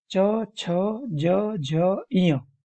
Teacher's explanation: तालू से निकलने वाले तालव्य